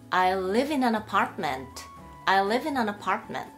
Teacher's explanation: hour、▁実際に▁h▁は書いてありますけれども発音されてないので